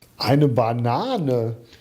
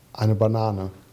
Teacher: And you see there's a strong excursion on both words, whereas in a neutral declarative, Eine Banane. you see the F0 contour is very flat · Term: admiration